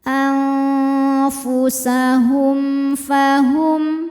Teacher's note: Hum ada hukum izhar syafawi karena mim sukun menghadapi huruf selain mim dan ba yaitu huruf Fa cara bacanya mim sukun dibaca jelas anfusahum fahum Hum ada hukum